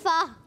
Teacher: ऊपर के दांतों के किनारे और नीचे वाले होंठ के तर हिस्से से